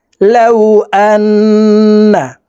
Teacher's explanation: গুন্নাহ করিয়া পড়িতে হয়। এই কারণে এই হামজা তাসদিদওয়ালা নুনের সাথে নাকের বাসি থেকে 3 সেকেন্ড পরিমাণ গুন্নাহ করে ধরে রেখে পড়তে হবে।